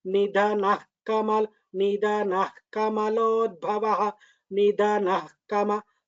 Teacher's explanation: That Nah half Visarga should be heard.